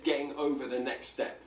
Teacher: all varieties um he definitely has cockney features in his accent the one that i want to focus on is that glottal t that's where we restrict the airflow